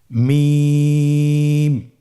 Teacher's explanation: হরফটি উচ্চারিত হয় দুই ঠোট চেপে ধরে আমরা উচ্চারণ করব · 2 ঠোঁট চেপে ধরে আমরা উচ্চারণ করব। মিম। আবার বলুন মিম।